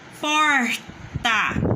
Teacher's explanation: O por tá mais forte. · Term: paroxítona